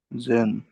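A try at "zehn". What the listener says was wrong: तो फिर जेन नहीं, सेन, सेन, सेन।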